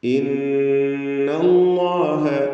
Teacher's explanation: ഇന്നല്ലാഹ നൂൻ മുഷദ്ദദയെ മണിക്കുക. അല്ലാഹ് എന്ന ഇസ്മുൽ ജലാല തഫ്ഖീം ചെയ്ത് ലാം ഉച്ചരിക്കുക.